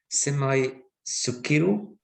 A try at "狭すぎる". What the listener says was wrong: But we've got to drop the e as well. Semasugiru.